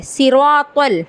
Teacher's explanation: तौ का मखरज क्या है, ज़ुबान की नोक और ऊपर के दांतों की जड़ से अदा होता है।